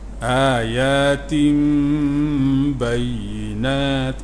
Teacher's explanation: Iklab tukar daripada nun kepada mim, sebab tu mim kecil tu ada bersama dengung, tutup mulut.